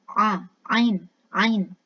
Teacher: Posisinya di tengah tenggorokan.